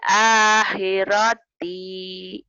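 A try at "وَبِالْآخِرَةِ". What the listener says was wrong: Pendek atuh. Ini bukan tak mau toh. Nah, jadi ha ya.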